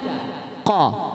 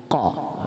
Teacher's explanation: huruf qaf bunyinya keluar dari pangkal lidah dekat dengan kerongkongan yang dihimpit ke langit-langit mulut bagian belakang.